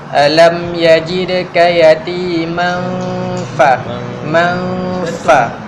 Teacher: Makhraj fa, gigi kaca sebelah atas bersentuh dengan bibir sebelah bawah.